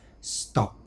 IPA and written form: stɒpt (stopped)